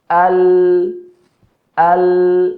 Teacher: Ya, karena pada la ketika kita mengucapkan huruf la, ya ujung lidah bertemu dengan ya langit bagian atas yang depan, kemudian suara keluar ya antara tepi lidah kanan dan kiri. Al mengalir sedikit ya.